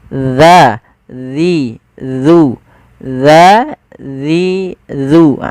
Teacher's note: ujung lidah kita menempelkan dengan gigi seri atas kita